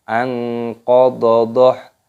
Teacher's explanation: nunnya nun sukun bertemu dengan huruf qaf, ini dibaca ikhfa, disamarkan